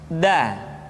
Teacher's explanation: Da diucapkan dengan menyentuhkan ujung lidah kita dengan bagian gusi-gusi dua gigi seri bagian atas. Da. Nah, kesalahan yang sering dilakukan adalah menyentuhkan ujung lidah dengan langit-langit. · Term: huruf da